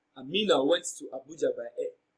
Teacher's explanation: Emphasis on Amina. That is why she's receiving the emphatic stress.